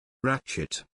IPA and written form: ˈrætʃ.ɪt (Ratchet)